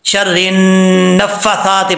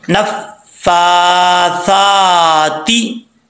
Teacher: अब यहां पे गलती क्या करते हैं लोग, आखिर में जो फा के ऊपर शब्द है खड़ा दबर, इसको छोड़ देते हैं, शर्रिन नफ्फासात पढ़ देते हैं, ऐसा नहीं करना, दोनों के ऊपर, फा के ऊपर भी सा के ऊपर भी खड़ा दबर है, दोनों को लंबा करना है एक अलिफ की मकदार